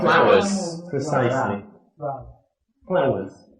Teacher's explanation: So we've got the teeth, the top teeth, touching the bottom lip, like this.